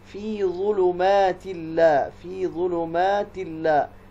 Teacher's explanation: تو اس تنوین کا اور لام کا ادغام ہوگا، اس کو ادغام بدون غنہ کہا جاتا ہے